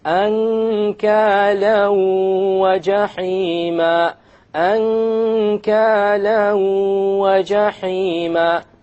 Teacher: You merge the tanween along with the waw and you move on. You don't pronounce the end sound and you have a ghunna.